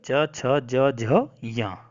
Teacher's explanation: ई च वर्ग य और श, इन सब का उच्चारण स्थान तालु होता है।